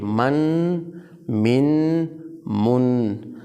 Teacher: من میں آواز کو ناک میں نکالنا ہے